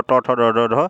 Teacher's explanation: और ट, ठ, ड, ढ, ढ ये क्या है? मूर्धन्य ध्वनियाँ हैं।